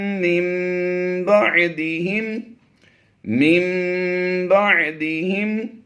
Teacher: اس نون کو ہم نے میم سے بدل کر اقلاب کرتے ہوئے آواز دینی ہے میم کی